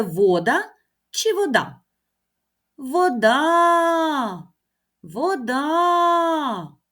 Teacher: ми знову чуємо наголос на останній голосний звук а це означає що останній звук а наголошений і другий склад в